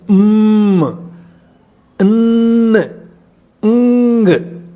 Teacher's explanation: the outgoing breath is coming out through the nose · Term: nasals